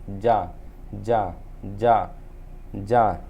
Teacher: जा जो है भैया वो आपका दंत से निकल रहा, दांत, दांत आपस में स्पर्श हो रहे हैं, ठीक है ना, दंत दांत आपस में स्पर्श हो रहे हैं।